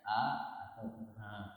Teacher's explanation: hamzah dan ha itu keluar hurufnya, makhrajnya dari pangkal tenggorokan, sehingga kadang atau pangkal tenggorokan bagian bawah ya, lebih mendekati ke dada, makanya agak sedikit seolah-olah keluar dari dada, a atau ha, tetapi tidak berlebihan, tidak berlebihan seperti itu.